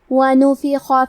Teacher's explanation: حرف الخا کی ادائیگی حلق کے اوپر والے حصے سے ہے. خا حروف تفخیم میں سے ہے تو ہم یہ حرف کو بھاری آواز میں پڑھیں گے.